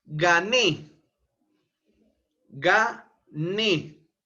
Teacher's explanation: Ne la sílaba tónica está en Ne es una palabra aguda el mayor impulso de voz se encuentra a nivel de la sílaba última Ne